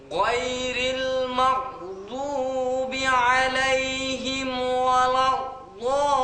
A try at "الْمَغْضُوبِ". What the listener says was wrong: বন্ধু, মাও বলে তোমার কল খোলা হয়ে যেতে চায়, আস্তে বলতে হবে মাও। গায়রিল মাও, মাও একটু দ্রুত বলতে গেলে কল খোলা হয়ে যাবে। মাও দুবি আলাইহিম ওয়ালাদ-দাল্লিন।